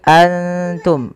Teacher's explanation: Apabila ikhfa itu terjadi apabila ada nun sukun atau tanwin bertemu dengan salah satu huruf ikhfa, di antaranya adalah huruf ta. Cara membacanya, samarkan nunnya kepada makhraj daripada huruf ta. Kalau makhrajnya misalkan ta itu makhrajnya adalah perbatasan ujung sari kita, ujung lidah kita menempelkan dengan di atas itu gusi atas dan gigi sari atasnya, ya, di perbatasannya, di ujung pangkalnya.